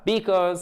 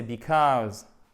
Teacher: Accent tonique sur la deuxième syllabe.